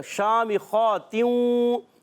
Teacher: خا پر کھڑا زبر ہے، اس کو بھی ایک الف کھینچ لیں. یعنی شین اور خا ایک ایک الف کھینچ کر ادا کریں گے. میم کے نیچے زیر ہے، حرکتیں نہیں کھینچیں گے.